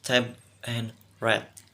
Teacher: Bagian oral diblokir dengan menekan ujung lidah ke alveolar.